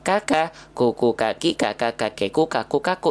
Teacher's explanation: Kaf itu punya sifat sama kayak huruf ta, ya, punya sifat namanya hams, ya. Hams itu artinya mengalir nafas.